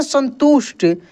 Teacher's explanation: अंदर से ये आवाज निकल रहा है। इसको उष्मीय श बोलते हैं, मूर्धन्य श, मूर्धा से निकल रहा है।